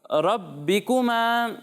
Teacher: یہاں پر صرف را کو پر پڑھنا ہے، را کے چکر میں با کو موٹا نہیں کرنا، ٹھیک ہے. با باریک ہی ہے اور با کو جماؤ کے ساتھ پڑھنا ہے، ٹھیک ہے. · اچھا، اور یہاں پر صرف را کو پر پڑھنا ہے، را کے چکر میں با کو موٹا نہیں کرنا، ٹھیک ہے. با باریک ہی ہے اور با کو جماؤ کے ساتھ پڑھنا ہے